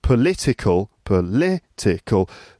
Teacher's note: the word stress is on the second syllable